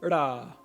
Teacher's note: others will actually curl their tongue backwards in a retroflex shape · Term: retroflex ra